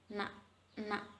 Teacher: ujung lidah bertemu dengan gusi 2 gigi seri lebih ke bawah, sedikit dari makhraj lam disertai gunnah dari rongga hidung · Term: nun